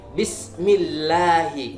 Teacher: Kita perhatikan ada lafdzul jalalah, sebelumnya ada huruf berharokat kasroh, maka cara membacanya tipis, yaitu tarkik. Bismillahi, tidak boleh kita membaca bismillahi, tidak boleh.